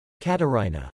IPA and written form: kɑtɑɹhinə (Catarrhina)